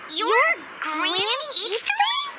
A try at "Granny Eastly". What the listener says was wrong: Yes, Granny Eastly. But emphasis on Eastly, not Granny.